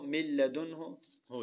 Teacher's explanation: نون کو لام بنا کر دونوں لام کو ایک کر دیا، دونوں لام کو ایک کر دیا، چنانچہ پڑھنے میں صرف لام آتا ہے اگرچہ لکھنے میں نون بھی باقی ہے، مگر ان 6 حرفوں میں اتنا فرق ہے کہ ان میں سے 4 حرفوں میں تو غنہ ہوگا اور لام را میں غنہ نہیں ہوگا۔ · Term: ادغام